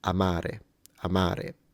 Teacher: the first a is shorter than the second so there is a quantity variance there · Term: length differentiation